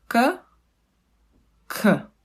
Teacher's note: K, you can almost find in the word cat, but the only difference between the English k and Czech k is that the Czech k, it's not aspirated. That means if you pronounce it, if you put a hand in front of your mouth, you don't feel the air coming.